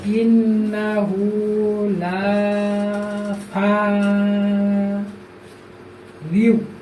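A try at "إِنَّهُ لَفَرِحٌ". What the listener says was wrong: ফা রিউ বলতেছে কেন? ফা রি, রয় নিচে যে আছে রি।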